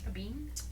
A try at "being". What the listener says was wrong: Being. Not being like, beans.